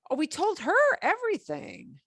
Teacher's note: raising my intonation on certain words so more emphasis on her everything